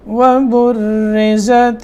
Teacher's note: وبرزت را باریک ہوگا, کیوں نیچے زیر ہے, آگے زا, یہ زا را زا.